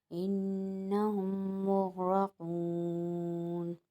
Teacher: مغرقون۔ اب یہاں پر انہم میں نون مشدد آ رہا ہے، نون مشدد کو ایک الف کی مقدار غنہ کر کے ہم نے پڑھا